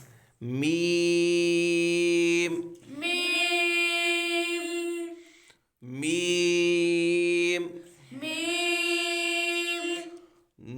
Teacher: यह दोनों होठों के खुश्क हिस से अदा होता है · یہ دونوں ہونٹوں کے خشک حصے سے ادا ہوتا ہے